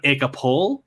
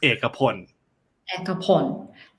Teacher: often if a word ends in L, we don't close it with an L sound. We end it with an N sound.